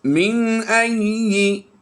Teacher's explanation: نون ساکن کے بعد حمزہ حروف حلقی سے آیا تو ہم نے یہاں پر غنہ نہیں کرنا بلکہ اظہار کرتے ہوئے بغیر غنہ کے پڑھنا ہے۔